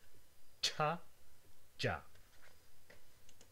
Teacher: this is a stop and a fricative produced at the same time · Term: Affricates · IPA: tʃa dʒa